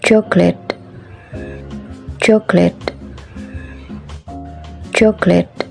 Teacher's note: Next, for the second participant, she pronounced chocolate as chocolate, which reflects the typical native-like reduction of the middle syllable. This shows a case of elision where the unstressed vowel in the second syllable is omitted, reducing the word from 3 to 2 syllables.